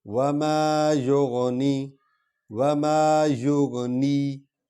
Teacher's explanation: نی تھوڑا سا لمبا بھی کرنا ہے اور ناک میں بھی آواز نہیں لینی